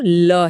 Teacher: पांचवा प्रकार है पार्श्विक व्यंजन जो ल है। बोलते समय जीभ बीच में आ जाती है और हवा अगल-बगल से निकलती है।